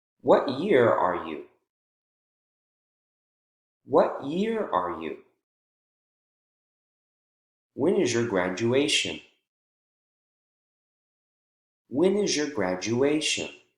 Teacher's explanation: Focus word, just like how we saw up above, that our voice usually jumps up when we pronounce the strong syllable in a focus word. And then right after that strong syllable, our voice goes back down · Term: falling intonation